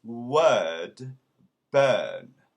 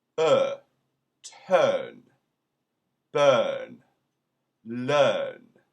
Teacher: R before a consonant is silent. But what is different is it creates a puckered sound with the mouth yawning.